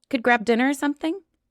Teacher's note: I have a question at the end, so my voice goes up.